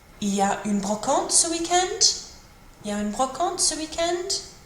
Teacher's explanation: Put your voice up at the end, just rising intonation.